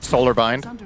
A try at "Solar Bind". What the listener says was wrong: See, it sounded like you rushed it because you really tried to pronounce it correctly.